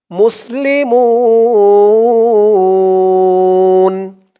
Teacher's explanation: মু বলে তিন আলিফ টান দিয়ে এই নুন কে ধরবে নুনের উপরে জবরটা সাকিন হয়ে যাবে তিন আলিফ টান মধ্যে আরজি